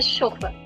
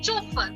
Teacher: which means that the French pronounce ch as sh